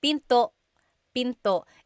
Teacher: don't forget to stop the sound at the end that's called a glottal stop Pinto Pinto it's not Pinto it's Pinto stop it at the